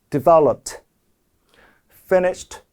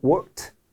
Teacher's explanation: 안 울리는 무성음으로 끝나면 무성음 발음은 t라고 발음을 같이 하는 거죠.